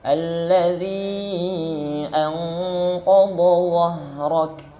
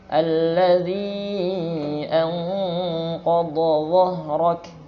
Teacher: H-nya dialirkan. Tapi lembut. Kayak kalau kita lagi kecapean, ngos-ngosan misalnya. Itu huruf H sebenarnya ya. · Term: rakhawah